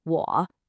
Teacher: A very common mistake for learners is to say it flat. A third tone has a very specific shape. It dips down and then it comes back up. I want you to imagine tracing a check mark with your voice.